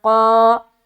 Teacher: قاف جو ہے وہ موٹے حروف میں سے ایک ہے، تو اسے منہ بھر کر ادا کرنا ہے۔ قاف الف زبر قا، اور الف مدہ کرتے ہوئے کھینچیں گے۔